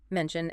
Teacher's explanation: mentioned ends in N which is voiced